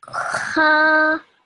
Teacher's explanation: a vertical fatha should be 2 seconds long, which is exactly what you did.